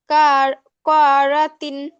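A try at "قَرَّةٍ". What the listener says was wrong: না, কাপ জবর কি হয় আপু? হ্যাঁ, কাপ জবর কা, আর কব জবর কি হয়? এই দুটো পার্থক্য মনে রাখবা, ভুল হচ্ছে একটু বেশি। কাপ জবর কা, আর কব জবর ক।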